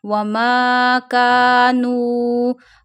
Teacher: Nu contain waw madda. When zamma come before waw sakin, you stretch waw up to one finger.